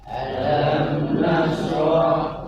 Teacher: Di situ ada mim mati bertemu huruf nun ya. Maka jangan sampai bacaannya ditahan ya. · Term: Izhar syafawi